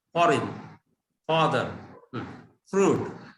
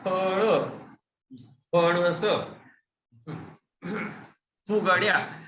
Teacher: आपण दोन्ही ओठ एकदम उघडतो, एक्सप्लोसिव्ह, म्हणजे दोन्ही ओठ एकदम उघडतो आणि त्याच्यामधून हवा बाहेर काढतो. त्याला ओष्ठ्य अक्षर म्हणतात.